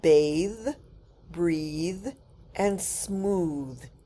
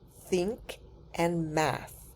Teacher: The th is voiced in the words bathe, breathe and smooth. It is unvoiced in the words think and math.